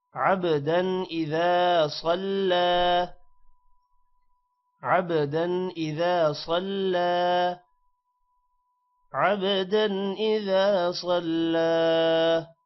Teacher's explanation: عبدا با پر قلقلہ ہے دن پر غنہ نہیں ہوگا کیونکہ حمزہ حروف حلقی ہے · صاد موٹا ہوگا اور لام کھڑی زبر ہے اس وجہ سے ایک الف کے برابر لمبا کیا جائے گا